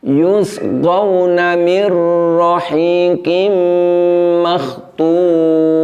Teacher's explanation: Karena kita menahan idgham bila hunahnya, bunyinya, maka di situ walaupun nun sukun telah diidghamkan ke huruf ro, namun yang terjadi adalah bunyi getaran atau sifat takrir pada huruf ro ini menjadi terlalu panjang. Semestinya ro itu diucapkan dengan menggetarkan ujung lidah, namun getarannya itu lembut dan pendek.